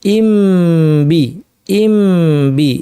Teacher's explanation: ইম বলার সময় আমরা দুই ঠোঁট লাগিয়েছি, এই লাগানো অবস্থা থেকেই মাখরাজকে আমরা সেপারেট না করেই পরের হরফে চলে গিয়েছি। অর্থাৎ নতুন হরফটাকে আমরা রিস্টার্ট করি নাই, নতুন করে না বলে এই হরফ থেকে আমরা যেন আওয়াজটাকে শিফট করে ওই হরফে নিয়ে গেলাম, মাখরাজকে পুরোপুরি সেপারেট না করেই পরের হরফে চলে গেলাম, এটাই হচ্ছে ইখফা।